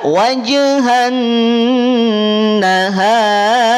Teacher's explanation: ketika huruf ro kemudian dia Sukun dan pula diawali oleh huruf yang berharakat fathah maka r-nya dibaca tafkhim Dibaca Apa tafkhim dibaca tebal tidak wajhan [Tepuk tangan] nahar tapi